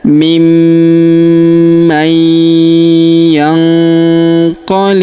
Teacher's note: huruf nun sukun bertemu huruf qo maka nun sukunnya melebur ke huruf qo kita baca dengung dan samar. Dengungnya kita tahan dua sampai 3 harakat.